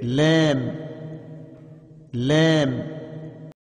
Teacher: کنارہ زبان مسوڑے سے مل کر لام ادا ہوتا ہے